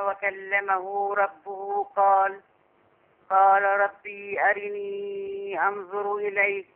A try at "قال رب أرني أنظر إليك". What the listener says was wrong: لا تاني بقى، تاني ورب مفيش فيها ياء. رب أرني على طول كده.